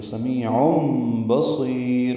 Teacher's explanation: سمیم یا مد ہے، 2 حرکات لمبا ہے، عین وسط حلق سے ادا کریں گے۔ تنوین کے بعد با آنے کی وجہ سے اقلاب ہوگا، نون کی جگہ میم پڑھیں گے، تو سمیع بصیر، صاد پر پڑھیں گے، یا باریک پڑھیں گے، را بھی وقفاً باریک ہوگی، بصیر۔